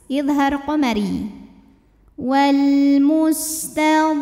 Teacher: alif lam menghadapi huruf qamariah yaitu mim maka lam dibaca jelas